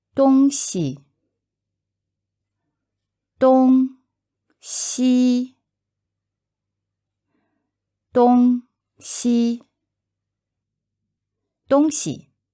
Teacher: both are first tone and they literally mean East West